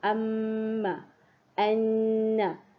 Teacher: Bunyi dia mesti keluar dari pangkal hidung. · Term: dengung